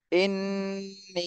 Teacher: হামজা নুন জের ইন নুন ইয়া জের নি ইন্নি হরকতের বামে নুনে তাসদিদ এখানে ওয়াজিব গুন্না করতে হবে ইন্নি আবার তিন আলিফ টান দিতে হবে ইন্নি হামজা খারা জবর